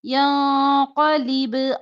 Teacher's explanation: लिब बा पर कलकला